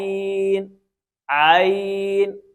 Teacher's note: عین کو حلق کے درمیان سے پڑھنا ہے